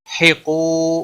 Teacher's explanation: قاف حروف مستعلیہ میں سے ہے، پر پڑھیں گے۔ واو مدہ ہے، ایک الف کے برابر کھینچ کر پڑھیں گے، نہ کو کھینچنا نہیں۔